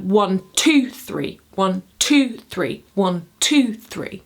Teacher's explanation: Amphibrak is an unstressed syllable, a stressed syllable, and an unstressed syllable. So it's a triple, but it's like 1, 2, 3, 1, 2, 3, 1, 2, 3.